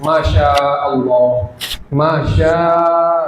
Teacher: jadi mad wajib muttasil wajib dipanjangkan empat sampai 5 harakat saja